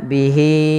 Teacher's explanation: Maka panjang untuk mad silah tawilah di sini adalah sebagaimana mad jaiz, yaitu 4 harokat. Maka di sini hi-nya wajib kita panjangkan sepanjang 4 harokat.